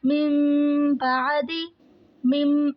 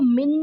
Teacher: نون ساکن کو ہم نے میم میں بدل دیا، تو مم بعدی مم، ابھی ہم اس کو من نہیں پڑھ رہے، نون ختم، ٹھیک ہے؟ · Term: اقلاب